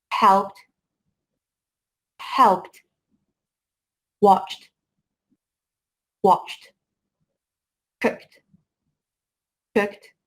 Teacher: after the unvoiced consonants the Ed is pronounced as T